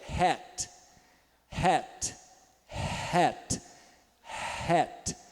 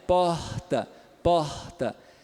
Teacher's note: suave Ok por não é a língua que tá em Ação é a glote as cordas vocais que estão um pouquinho mais próximas e o ar passa causando um pouquinho de fricção muito pouco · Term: ponto glotal